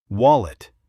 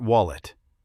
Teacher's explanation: Many learners say wallet, but we say wallet with the stress at the start. Wallet.